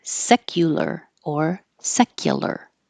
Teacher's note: And secular, secular. The U can change to ya because it's not stressed.